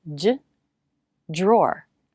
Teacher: DR can sound like JR, j, drawer. Many Americans pronounce it this way.